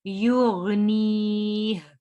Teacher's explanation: غین کو موٹا پڑھنا ہے